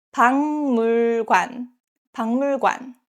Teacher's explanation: 박 ends with 기역 and next syllable 물 starts with 미음. So this case, 박 is pronounced as 방